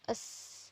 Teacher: fricative alveolar yang berbunyi es bunyi es merupakan bunyi tak bersuara